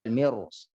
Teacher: karena ada huruf tafkhim di depannya atau huruf isti'la di depannya, huruf tebal, yaitu huruf shad. Maka ra-nya dia tebal.